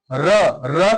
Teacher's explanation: र का जब हम उच्चारण करते हैं तो अंदर एक कंपन पैदा होता है और फिर ध्वनि निश्चित होती है तो यह र जो ध्वनि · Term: लुंठित